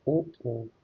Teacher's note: कंठोष्ठ है कंठ और ओष्ठ से